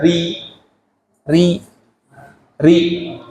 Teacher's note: ketika ro itu dibaca tipis lidah belakang di turunkan